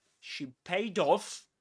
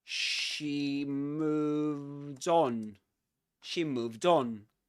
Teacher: You can see that I'm linking these to the final consonant in paid with the initial vowel sound in off. And we call this catenation in English, which is the linking of final consonants to, let's put it like this, initial vowel sounds